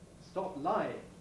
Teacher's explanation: you can hear how this p is not aspirated it's probably globally reinforced and so on stop lying that sounds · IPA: stop laɪ-